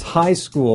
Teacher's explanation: The word stress comes on high.